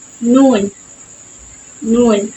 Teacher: tongue remain slightly raised but do not press against the MERS it is the nasal sound so air passes through the nose · the tip of the tongue touches the gum Ridge just behind the Upper Front Teeth called The alular Ridge the sides of the tongue remain slightly